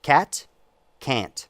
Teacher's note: You get in my dialect, in Pacific Northwest American English, you get a difference between cat, C-A-T, and can't, C-A-N, apostrophe T, but you don't pronounce the N